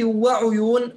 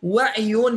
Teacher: بضم العين عند حفص وعيون بكسر العين عند شعبة